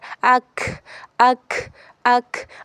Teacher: اب اس کاف میں جو ہے زبان کی جڑ اور تالو کا سخت حصہ استعمال ہو رہا ہے